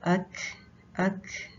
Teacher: साकिन काफ जब आप पढ़ेंगे अक अक, तो उसमें साथ सांस बाहर निकलता है